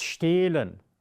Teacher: You have the letter E and then comes the H. But the H you would not hear. It's not pronounced.